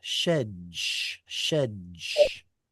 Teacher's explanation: Dolllet and sheen are pronounced in the same place in the mouth. And that's precisely why the dolllet assimilates into it.